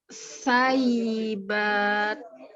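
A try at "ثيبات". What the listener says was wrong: Huruf ta-nya jangan lidahnya keluar. Ta nggak boleh keluar lidahnya.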